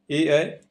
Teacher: ए ऐ कंठ और तालु से बोला जाता है, यानी इनका कोई एक स्वर तंत्र नहीं है, ये 2 स्वर तंत्रों से मिलाकर बोले जाते हैं। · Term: कंठ तालव्य